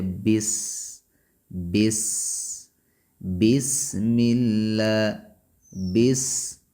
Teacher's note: بس، سین یہ حروف صفیریہ میں سے ہے، سین کے اندر سیٹی پائی جاتی ہے، بس بس، بسم اللہ، بس، سین حمز کی صفت بس کے اندر پائی جاتی ہے